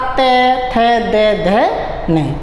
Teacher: जब भी हम ते वर्ग को बोलते हैं तो जो हमारी जीभ होती है वह दांतों को टच करती हुई चलती है